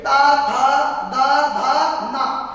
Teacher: ता वर्ग का उच्चारण कहां से होता है दंत से · बोल के देखो, यानी कि हमारी जो जीभ है वो दांत से टकराएगी